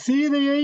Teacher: சீதையை என்ற இடையில் வருகின்ற ஐகாரம் தன்னுடைய இரண்டு மாத்திரையில் ஒரு மாத்திரையாக குறுகி ஒலிக்கும் என்பதும் கடையில் இருக்கின்ற சீதையை என்று சொல்லுகின்ற அந்த ஐகாரமும் தன்னுடைய மாத்திரையில் குறுகி